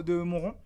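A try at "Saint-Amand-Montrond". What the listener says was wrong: Montron. Saint-Amand-Montron, il y a pas de deux. Saint-Amand-Montron.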